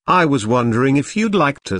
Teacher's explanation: nervous and does not want to appear too direct or bold notice how the question goes up at the end which shows that he is not overly confident